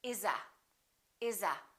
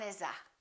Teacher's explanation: an s followed by a vowel therefore we say iza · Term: linking